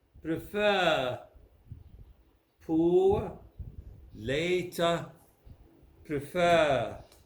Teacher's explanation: that is at the end of the word you don't pronounce the r in british english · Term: the r is silent